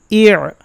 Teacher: আইন জের ই গলার মধ্যে নিতে হবে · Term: শক্ত আইন